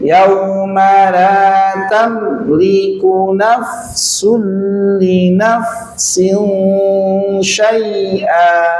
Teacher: Jadi idgham bila ghunnah itu tanpa dengung. Idgham tapi tanpa dengung, bukan idhar, tapi idgham tanpa dengung.